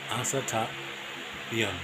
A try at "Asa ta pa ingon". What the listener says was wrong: It's not biyon. Asa tapiyon. Asa tapaingon. Asa tapaingon.